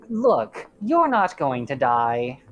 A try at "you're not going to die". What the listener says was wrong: You put an emphasis on the your.